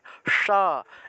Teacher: মূর্ধন্যস এর উচ্চারণটা হবে স অর্থাৎ জিহভাটাকে উল্টিয়ে উচ্চারণ করতে হয়